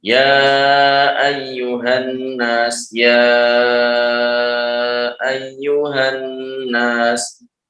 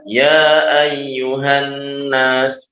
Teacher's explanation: Jadi cara membacanya bisa dua wajah, bisa dengan seperti panjangnya mad wajib Bisa juga seperti panjangnya mad tabi'i. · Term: mad jaiz